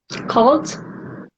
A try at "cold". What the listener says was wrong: Perfection. Now you said that right, cold.